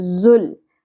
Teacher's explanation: ज लाम साकिन के साथ मिल जाएगा शिद्दत और सीटी के साथ